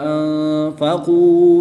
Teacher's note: نون ساکن کے بعد حروف اخفا میں سے فا ہے تو یہاں پر اخفا ہوگا، یعنی غنہ زمانی کر کے پڑھیں گے